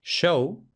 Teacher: Luego tenemos la fricativa prepalatal sorda, la sh, de por ejemplo en inglés show, la correspondiente sonora, es decir, la j, por ejemplo, francés je m'appelle o inglés visual.